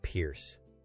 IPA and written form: pɪrs (pierce)